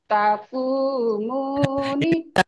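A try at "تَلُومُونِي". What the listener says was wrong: ini lam. Bukan kaf ya. Kaf ada tangkai. Talu. Talu, talumuni. Panjang semua ya ininya, tanya doang. Talu, talumuni. Ini alifnya tapi dianggap tidak ada.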